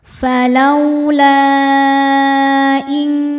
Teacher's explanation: Hamzahnya alif dengan harakat kasrah masuk ke kata kedua yaitu in kuntum. Maka huruf lamnya boleh dipanjangkan lebih dari dua. Boleh empat boleh lima harakat. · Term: mad jaiz munfasil